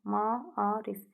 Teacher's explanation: A-nın biri düşür, digəri isə uzun tələffüz olunur